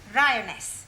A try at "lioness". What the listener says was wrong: No, l. You're not saying it right. Try saying lioness. Well, in future, every time you see an L, pretend it's an R, right?